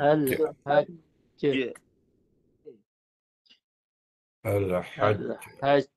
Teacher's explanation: Dia memang sifat dia menahan dulu suara, lepas tu baru pantul. Dan pantulan hanya suara semata-mata. Tidak ada campuran desiran ke, tafashi ke. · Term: jim mati